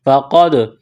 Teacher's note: قاف کو موٹا کرنا ہے، دال ساکن ہے، قاف کو دال کے ساتھ ملانا ہے، قلقلہ کریں گے دال پر